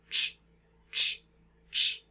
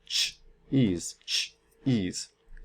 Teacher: here we have a t sound followed by a sh sound except they're co-articulated they're made at the same time so we have t and Sh going at the same time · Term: africat